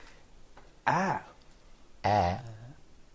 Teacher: Can you feel the height of the tongue? Yeah. It's very low. Very low.